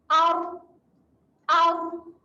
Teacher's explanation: Ada getaran dekat hujung lidah.